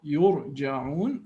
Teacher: there is an influence from the previous u, yurja'un, which makes the ra strong or full mouth.